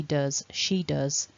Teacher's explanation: with does, as in he does, she does, it actually ends with a z, with a voiced sound. So it's not a s, it's voiced, it's z, does.